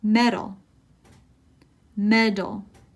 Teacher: It's almost like a D sound instead of a T.